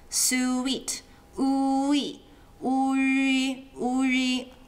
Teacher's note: when you are saying the E part, don't draw your lips back. In other words, don't stop saying U. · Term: Ü